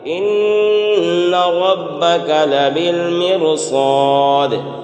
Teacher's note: 7 حروف میں سے اگر کوئی بھی ایک حرف آئے گا تو اس صورت میں را باریک نہیں، پور پڑھی جاتی ہے، تو لہٰذا لبالمرصاد یہاں پر را پور ہوگی، تو موٹا کر کے یہاں پڑھیں گے۔